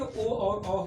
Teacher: कंठ और ओठ के माध्यम से ओ और औ का उच्चारण होता है